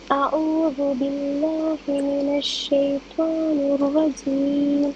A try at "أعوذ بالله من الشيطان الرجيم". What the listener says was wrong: അഹനത്ത ഐൻ ഒന്നും കൂടി ശരിയാവണ്ടേ? അഊദു